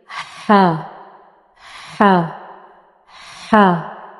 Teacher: जब आप ये लेटर अदा करेंगे हा, तो पहले आपकी सांस बाहर आती है, बाद में इस लेटर की आवाज़ बाहर आएगी। ठीक है, ये भी हल्क के दरमियानी हिस्से से अदा होता है, लेकिन इसको अदा करते हुए पहले हमारी सांस बाहर आती है, बाद में इस लेटर की आवाज़।